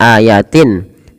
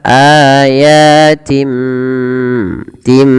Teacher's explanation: kita membalikkan bunyi suara nun kepada huruf mim. Awalnya ayatin, karena ada bertemu dengan ba diganti dengan mim suara nunnya. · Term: iklab